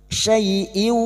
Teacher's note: Fathah bertemu ya sukun, kita lunakkan huruf lin